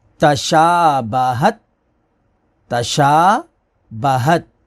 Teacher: یہ کھڑا زبر ہے شین کے اوپر، اس کو ایک الف کے برابر کھینچ کر پڑھیں گے